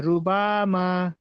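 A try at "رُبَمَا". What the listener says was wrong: বা টান হবে না, মা টান হবে। রয়ের উপরে জাবার পেশ থাকলো র পুর।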